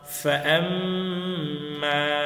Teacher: মিমে গুন্না হবে প্রথমত, এরপরে এক আলিফ টান হবে মধুর হরফের কারণে।